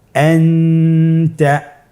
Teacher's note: তাহলে এখানে আমাদেরকে নুন সাকিনকে লুকিয়ে গুণনা করে পড়তে হবে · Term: ইখফা